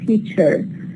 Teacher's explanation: many British delete the r when it occurs in a final position